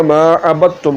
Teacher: نے تا میں ملا دینا ہے اور یہ ادغام ہے، تو دال کو جب ہم تا میں ملا دیں گے تو پھر یہ بن جائے گا ما عبدتم